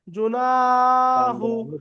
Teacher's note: আছে আলিফের ডানদিকে আছে >> আলিফের ডানদিকে আছে আলিফ মাদ্দা হবে আলিফ মাদ্দাকে আলিফ পরিমাণ টান দিয়ে পড়ব